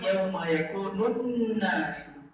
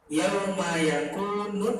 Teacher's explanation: Perhatikan lamnya tidak dibaca dan setelah alif lam ada tasydid. Nah, berarti ini adalah alif lam syamsiyah.